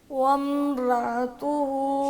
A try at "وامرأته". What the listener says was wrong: رأتہ نہیں بولنا حمزہ کو ساکن نہیں کرنا وامرأته